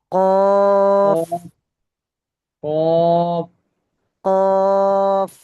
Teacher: কফ বলার সময় মুখ কিন্তু গোল হবে না, স্বাভাবিক থাকবে